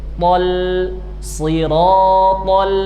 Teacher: lamnya ringan, jangan tebal